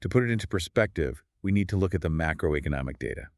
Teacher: employ a fast, flat, downward-inflecting intonation